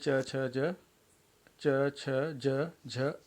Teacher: कुछ देर तक हवा को घर्षण करके निकलना पड़ता है। तो यहाँ पे कुछ देर तक यहाँ पे घर्षण के द्वारा ये निकल रहा है। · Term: स्पर्श संघर्षी